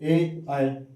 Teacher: कंठ और तालव्य से इसका उच्चारण होता है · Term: कंठ तालव्य वर्ण